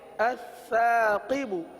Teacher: سین کی آواز نہ ہے، سا پڑھیں گے